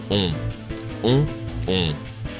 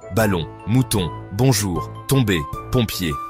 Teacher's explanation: Pour le faire, arrondissez les lèvres comme pour siffler ou dire "Oh !" La langue se retire un peu, le dos se relève, le voile du palais s'abaisse, l'air passe par le nez.